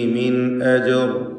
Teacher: മിൻ ഇതിലുള്ള സക്കിനത്തെ നൂനിന് ഇൽഹാർ ഹൽക്കി നൽകി മണിക്കാതെ വെളിവാക്കേണ്ടതാണ്